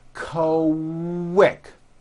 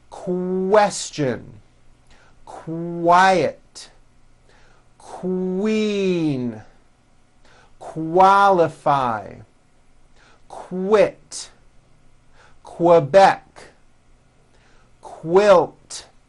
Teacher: the word quick is pronounced with a K and a strong W sound